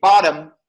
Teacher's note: In American, we have flap T. If you say bottom, that T is flap.